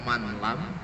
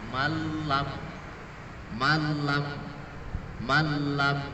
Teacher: Tidak man lam, tapi malam, malam. Ini seolah-olah nun matinya itu hilang, kemudian lamnya, huruf lamnya itu ada tasdidnya. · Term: idgham bila gunnah